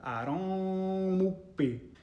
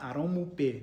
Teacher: This is what we call a labial velar plosive. It's a double articulation. That means you're pronouncing a K sound and a P sound at the same time.